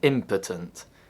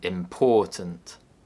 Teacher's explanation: the first syllable is stressed in impotent, and the second syllable is stressed in important